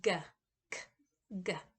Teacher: It's produced in the same place, but one is voiced and one is unvoiced.